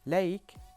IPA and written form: leɪk (lake)